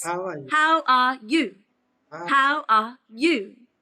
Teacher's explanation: she went up at the end that's not correct it goes down at the end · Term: intonation